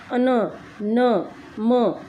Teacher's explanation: अनुनासिक होता है यानी नाक से बोला जाता है